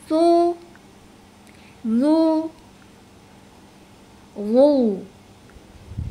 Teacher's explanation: Huruf zo harus terdengar tebal, beda dengan kedua huruf yang lainnya.